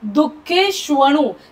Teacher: श पोटफोड्या श आहे, तो जीभ टाळूकडे गेली पाहिजे